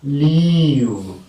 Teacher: these lateral sounds sometimes are articulated with more fronting of the tongue, as in the case of leave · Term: clear L